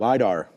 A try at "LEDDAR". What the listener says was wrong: But it's an E, not an I. So it's like